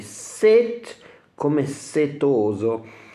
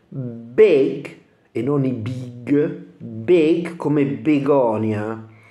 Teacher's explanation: molto più simile a una e chiusa e molto breve della i italiana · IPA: /i/